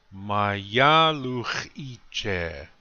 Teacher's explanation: Notice the accent is on the second syllable.